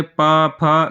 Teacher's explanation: जब पा बोलते हैं देखिए दोनों ओंठ चिपकते हैं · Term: ओष्ठ